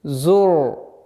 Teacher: Ра твердая. Так как впереди стоящий звук стоит с огласовкой дамма, ра твердый будет.